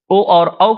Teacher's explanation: ओ और औ का उच्चारण स्थान क्या है? कंठ, ओष्ठ।